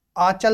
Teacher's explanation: आंचल शब्द के उच्चारण में हवा मुंह व नाक दोनों से निकल रही है।